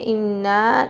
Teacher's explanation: نون پہ غنہ کر کے لمبا کریں گے کیونکہ زبر کے بعد الف آ رہا ہے